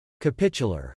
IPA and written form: kəˈpɪtʃ ə lər (capitular)